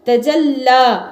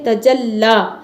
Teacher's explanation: जो अलिफ आ रहा है यह मद्दा है त जल्ला यहां लाम को बारीक करके पढ़ेंगे और लाम के ऊपर तद है इसलिए इसको दो बार पढ़ेंगे और सख्ती के साथ पढ़ेंगे